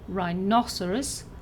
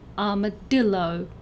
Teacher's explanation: the stress is either on the second syllable, as in rhinoceros, or the third syllable, as in armadillo